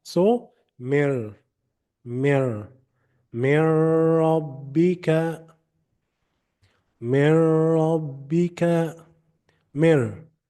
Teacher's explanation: So here I will start from the letter meme with its vowel kasra, and I will go directly to the letter ra. I will delete the letter noon. And you don't need to do any nasal sound. So what you should not say is min rabbika, min rabbika, no. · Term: idgham without ghunnah